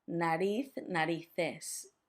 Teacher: make sure that that Z has a th sound